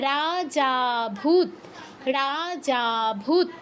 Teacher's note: লুপ্ত এর আগের অক্ষরটাকে আমাদের দীর্ঘ থেকে বেশি সময় নিয়ে উচ্চারণ করতে হবে। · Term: প্লুতস্বর